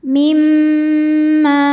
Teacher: hadzam mimma disebut Kamil karena masuknya tanwin ke mim sempurna jadi tanwin sifatnya sama sekali sudah tidak terlihat kalau ada dengung dengungnya dari mim bukan dari tanwinnya